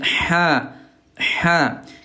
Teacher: huruf ha di tengah tenggorokan melewati katup namanya katup epligotis